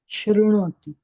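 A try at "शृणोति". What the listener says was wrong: Shri, Ri. Shrinoti, Shrunutaha, Shrunvanti. If you say Shrunoti, it is wrong. It is Shri.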